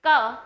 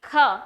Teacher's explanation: तो वर्ग का पहला, तीसरा, पांचवा वर्ण अल्प प्राण होता है और दूसरा, चौथा वर्ण महाप्राण होता है। यानी जब आप बोलेंगे क तो आप पाएंगे ध्वनि कम निकल रही है, लेकिन जब आप बोलेंगे ख तो ध्वनि ज्यादा निकल रही है।